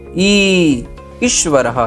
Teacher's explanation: ये बड़ी ई है, इसे थोड़ी 2 मात्राओं का समय लगा के बोलना है